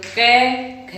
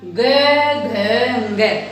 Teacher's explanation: क, ख नहीं हो रही तो ये अघोष वर्ण। ग, घ, ग गूंज उत्पन्न हो रही है तो यानी कि घोष वर्ण